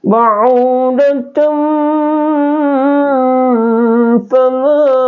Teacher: Jadi ikhfa hakiki itu didengunkan dan samar-samar ya. Jadi ba'udatum fama ya, jadi bukan ba'udatum fama, jadi ba'udatum fama.